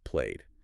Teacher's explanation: So you keep the motor running. You use the voiced D sound.